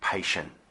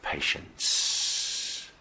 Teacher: we're going to be going with the t first and then the nice smooth s sound